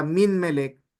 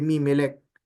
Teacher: At dahil merong nawala, particularly yung noon, nag-lengthen ngayon or nag-double yung sound ng mem. Kaya naging mimelek.